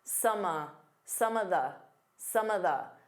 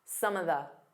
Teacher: Instead of saying of, you can just do an unstressed uh